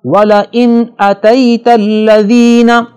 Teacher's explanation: نون ساکن کے بعد حروف اظہار میں سے حمزہ آ رہا ہے لہذا نون کی آواز کو ظاہر کر کے پڑھیں گے, یہاں غنہ نہیں ہوگا.